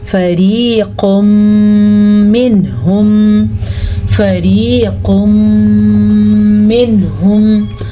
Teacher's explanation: قاف کو موٹا پڑھیں گے. قاف ہمیشہ ہی موٹا پڑا جاتا ہے · ہمارے پاس نون تنوین کے بعد یمون میں سے میم آیا ہوا ہے تو ہم ان دونوں کو ملانے کے ساتھ ساتھ غنہ بھی کریں گے. قاف کو موٹا پڑھیں گے.